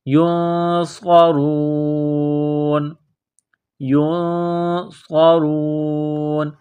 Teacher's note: صاد کو موٹا کرنا ہے، صاد میں سیٹی کی آواز پیدا کرنی ہے · را کو موٹا کرنا ہے، را کے اوپر پیش ہے